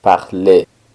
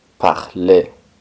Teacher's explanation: La R del final no suena, solo suena la E.